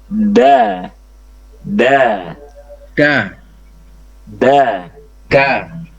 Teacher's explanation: Harusnya kan ujung lidah dengan pangkal gigi seri atas. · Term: huruf dal